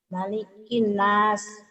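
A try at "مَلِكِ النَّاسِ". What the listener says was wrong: Nunnya ada tasjidnya nih Bu ya. Ditahan.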